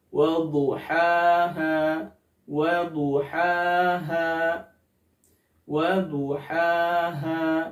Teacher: dari sisi lidah menyentuh gigi geraham bagian atas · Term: huruf dad